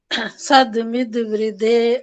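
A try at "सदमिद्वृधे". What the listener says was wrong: सदमित में थोड़ा सा वो हो गया था, सदमित वृद्धि, द को, दूसरे द को थोड़ा और कम टाइम देना, सदमित।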